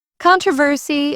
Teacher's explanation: Controversy is stressed on the first syllable in British English, not the second.